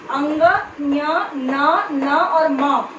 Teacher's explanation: वो सब जो है वो नासिका से अर्थात नाक से बोला जाता है, इसीलिए इसे बोलते हैं नासिक्य